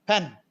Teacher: You have to chop, you have to cut that last u.